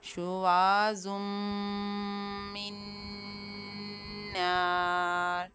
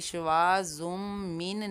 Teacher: شواظم من نار، اور یہاں پر میم مشدد کے اندر بھی غنہ کریں گے اور نون مشدد کے اندر بھی غنہ کریں گے۔ غنہ کرتے ہوئے آواز کو ناک کے اندر لے کر جائیں گے اور ایک الف کی مقدار ٹھہریں گے۔ درمیان میں نون کی آواز کو ظاہر نہیں کریں گے، یعنی شواظم من نہیں پڑھنا، اس طرح سے ادائیگی غلط ہو جائے گی۔ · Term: ادغام